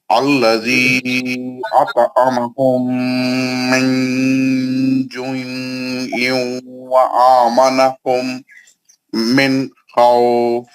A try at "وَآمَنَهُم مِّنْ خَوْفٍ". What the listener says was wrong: نہیں وآمنہم میم کے بعد میم ہے نا.